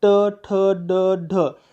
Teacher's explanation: मूर्धन्य म्हणजे टाळू आणि दाताच्या वरचा भाग यांच्या मधला जो भाग आहे तिथं जर जीभ लागली तर आपण त्याला मूर्धन्य असं म्हणतो